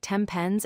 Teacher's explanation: When the letter N comes before P or B sounds, it becomes an M sound.